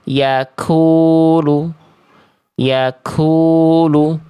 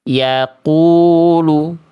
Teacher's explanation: jangan biarkan pangkal lidah terlalu maju ke depan, atau akan terdengar seperti yaakulu. yaakulu. Tarik napas lebih dalam hingga tertahan.